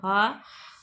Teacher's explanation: ह वर्ण घोष तथा महाप्राण दोनों है। यह उष्म व्यंजन भी है।